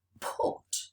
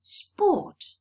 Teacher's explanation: you've got this diacritic this little H raised next to putt to show aspiration it's a puff of air that comes out